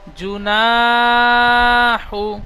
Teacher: নুন আলিফ জবর না টান দিলাম। প্রথম জিম পেশ জু একটুও টান দি নাই। জিম পেশ জু নুন আলিফ জবার না জুনা হা পেশ হু জুনাহু ইজরা জিমের উপরে পেশ এসেছে।